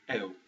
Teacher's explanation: Many people think that it would be e-u, but it's actually just one sound, eu. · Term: diphthongs